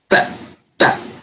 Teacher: Ang Filipino, mother tongue, ay interdental ang T. So pag tinuro po natin sa bata ang tamang tunog, sabihin mo, anak, ilagay ang dila sa gitna ng taas at baba mong ngipin.